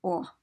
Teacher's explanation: it's like ah but you close your lips around that sound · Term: rounded o